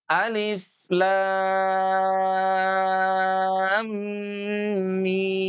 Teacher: Nah, nanti ada mim bertemu dengan mim. Maka di situ berlaku hukum mimi atau idgham mutamasilain. Didengung bunyinya sehingga tidak tergesa-gesa.